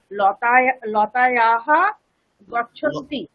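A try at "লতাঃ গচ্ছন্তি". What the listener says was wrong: লতায়াহা নয়, লতাহা।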